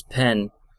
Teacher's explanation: I don't distinguish between pin, like you'd use for sewing, and a pen, like you would write with. So I just pronounce them both as pen.